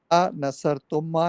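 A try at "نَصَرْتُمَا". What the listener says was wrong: तुम्मा नहीं, तुमा खाली, तुमा।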